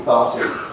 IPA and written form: ˈpaːti (party)